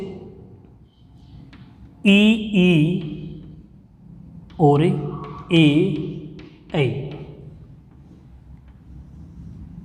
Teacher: ऐसे स्वर जिनके उच्चारण में जीभ के आगे का भाग सक्रिय होता है, आगे के भाग में कंपन होता है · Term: अग्र स्वर